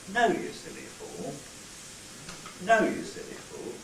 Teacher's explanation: Similarly, with a longer tail, we have a fall on the nuclear syllable itself, we then level out at a low level, and then rise towards the end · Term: fall rise